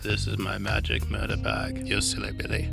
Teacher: For once my vocal fry comes in handy